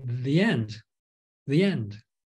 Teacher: or these sounds like a y makes your lips are wide you insert a y sound in there in order to be more fluent